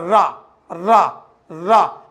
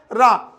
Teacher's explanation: अगर आप बोलते हैं रा तो आपकी जीभ आगे की ओर आती है और उस रा का प्रयोग करती है। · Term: लुंठित व्यंजन